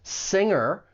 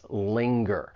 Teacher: Singer, you only have that ing sound, whereas linger, you have the ing plus that g sound afterwards, linger. It's similar to the word finger.